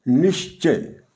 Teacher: नी plus च विसर्ग के बाद च है और यह विसर्ग यहां श में बदल गई है। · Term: विसर्ग का श